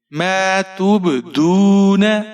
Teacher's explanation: تا کے اوپر پیش ہے، با ساکن ہے، یہاں پر آپ قلقلہ کریں گے۔ توب، دال کے اوپر پیش ہے، واو ساکن ہے، 1 الف کے برابر کھینچ کر پڑھیں گے، نون کے اوپر زبر ہے، بغیر کھینچے پڑھیں گے۔